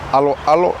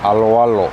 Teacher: it's often mispronounced as alo alo and they kind of break it up into two parts like that alo alo we don't want to do that because native speakers · want to do that because native speakers will pronounce it aloalo so that last o and that a blend into each other